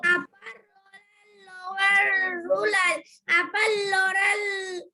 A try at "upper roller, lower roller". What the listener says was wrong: লোলার না, রোলার।